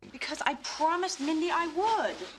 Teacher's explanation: preste atenção em como que ela realmente enfatiza esse would